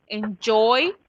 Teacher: no hay sonido consonante al final, sino que es un sonido como más vocal. Entonces es por eso que se agrega la S.